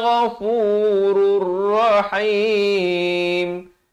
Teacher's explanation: Mim ba'di ikrahihinna ghafurur rahim. Di sini masuk tanpa dengung. Daripada ghafurun jadi ghafurur